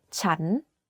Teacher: the word chan is pronounced first at a lower pitch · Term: Rising tone